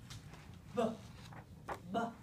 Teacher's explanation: I actually start vibrating my vocal folds before I release the air from my lips